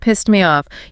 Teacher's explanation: it's a very soft t almost disappears sometimes, especially in a sentence